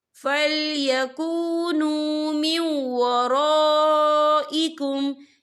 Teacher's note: فَإِذَا سَجَدُوا فَلْيَكُونُوا مِنْ وَرَائِكُمْ، یا دیکھیں فَلْيَكُونُوا مِنْ وَرَا، یہاں خالد سے پہلے زبر ہے اور اس پر مد بھی ہے، یہ مد جو ہے مد متصل ہے، اس کی مقدار 4 حرکت کے برابر ہے، تو ہم اسے 4 حرکت کے برابر کھینچ کے پڑھیں گے۔